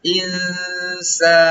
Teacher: Kemudian al-insan terdapat hukum bacaan ikhfa namanya. Nun mati bertemu sin, itu didengungkan.